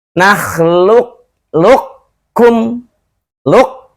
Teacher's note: ketika luk ketemu dengan qaf itu tebal, pangkal lidah terangkat. Kemudian ketika masuk ke huruf berikutnya kaf, murni kaf. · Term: idghamnya naqis